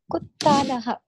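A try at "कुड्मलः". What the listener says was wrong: Kudalaha. Not talaha.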